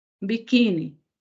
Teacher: O acento vem aqui, olha, no qui, e não no ni.